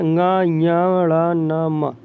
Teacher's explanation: पंचम अक्षरों का अपने अपने वर्गों के अतिरिक्त उच्चारण स्थान क्या होता है मित्र? नासिका होता है।